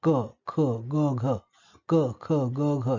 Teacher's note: टाळूचा जो मागचा भाग जो आहे तो मृदू असतो, मऊ असणारा. जिभेचा मागचा भाग टाळू दिशेने वर उचलतो आपण आणि यांचं उच्चारण होतं, अशा ध्वनीचं उच्चारण होतं. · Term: मृदू तालव्य ध्वनी